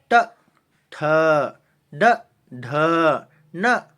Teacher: ಮೂರ್ಧನ್ಯ ಅಂದ್ರೆ ನಾಲಿಗೆಯ ಮೇಲ್ಭಾಗ ಮತ್ತು ಮೂಗಿನ ಕೆಳಭಾಗದ ಸಹಾಯದಿಂದ ಹುಟ್ಟುವ ಅಕ್ಷರಗಳು